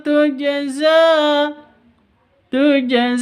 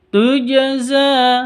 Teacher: Jim ini harus dipantulkan karena sukun atau mati karena Jim ini termasuk hurufnya qolqalah